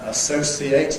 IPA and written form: əˈsəʊsieɪt (associate)